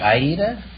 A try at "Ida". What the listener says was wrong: Well, no, there is no A. It's just Ida. I-D-A. But the Americans pronounce it Ida.